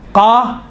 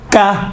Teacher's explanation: قاف اور کاف میں دیکھیں دونوں کا تلفظ ایک ہی ہے، فقط یہ ہے کہ جو زبان کی جڑ ہے، زبان کی جڑ سے قاف نکلتا ہے، اور زبان کی جڑ اگر نرم والی جگہ، اوپر والی نرم والی جگہ سے جب ٹچ ہوتی ہیں تو قاف نکلتا ہے، سخت والی جگہ سے ٹچ ہوتی ہیں زبان کی جڑ تو کاف نکلتا ہے